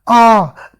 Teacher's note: तो आ जो है ये आपके कंठ से आकर के आ रही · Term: कंठ वर्ण